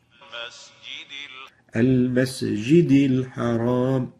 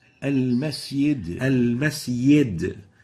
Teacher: instead of the jim they replace it with a ya